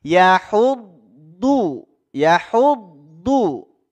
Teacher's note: huruf dad ini makhrajnya ada di pinggir lidah yang menempel dengan gigi geraham kita yang atas dari mulai geraham belakang sampai gigi